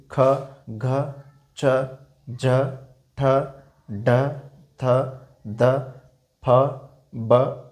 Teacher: महाप्राण वह वर्ण जिनके उच्चारण में हमें अधिक श्वास की आवश्यकता होती है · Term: महाप्राण ध्वनि